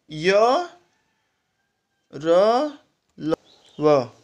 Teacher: अंतःस्थ व्यंजन में मुंह के किसी भाग से जीभ पूरी तरह से स्पर्श नहीं हो पाती। मतलब जब इसको हम लोग उच्चारण करते हैं, इसका जब बोलते हैं हम, तो बहुत हल्का वर्ड होता है ये।